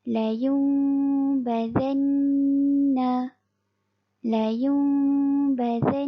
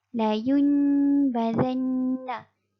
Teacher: Jadi, apabila nun mati atau tanwin bertemu dengan huruf ba akan dikenali sebagai iqlab. Jadi, cara bacaan bagi hukum iqlab adalah nun mati ditukar kepada mim. Diikhfakan dengan mengekalkan dengung pada mim.